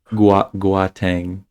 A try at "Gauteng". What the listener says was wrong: Gauteng. I don't know where you're getting a hard G. yes, but that's what languages that make that sound are spelled with.